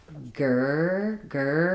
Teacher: So if I say, for example, grr, I can feel kind of where the placement of the R is, and then the sound is just a static sound with the tight tongue braced, and then either some curl or some bunching. It doesn't matter as much what the front of the tongue is doing. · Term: R sounds